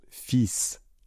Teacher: attention à la prononciation, on ne prononce pas le L